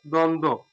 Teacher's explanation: দ্বন্দ্ব, অর্থাৎ এই আদিতে দয়ের সাথে ব আছে এবং শেষে নয় দয়ের সাথে ব আছে। এই যে যুক্ত বর্ণের সাথে আবার ব ফলা আছে, এই জন্য এই বয়ের উচ্চারণ নেই। আর শব্দের আদিতে যদি ব ফলা থাকে সে বয়ের উচ্চারণ হয় না।